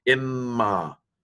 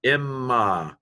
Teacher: I just kind of hold the m a little bit longer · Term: doubled mem